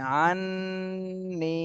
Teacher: এখানে হরকতের বামে নুনে তাশদি এজন্য ওয়াজিব গুন্না করতে হবে